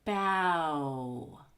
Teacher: the word ends in the vowel you'll go really deep you'll start with a big short a aa and then proceed all the way to the tight-lipped ooh